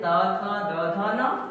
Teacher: ये सभी वर्णों का उच्चारण दंत से होता है, मतलब दांत के माध्यम से होता है